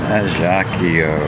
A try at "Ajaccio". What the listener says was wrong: I guess it's French not Italian, so the C C is not like a hard K.